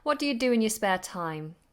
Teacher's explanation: Now we have 2 sets of weak forms. What do you do? But the second do is strong because the second do is important.